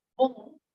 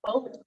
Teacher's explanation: So like the word bon, good in French, again, I don't have to in French at all, but they have this sort of nasalized vowel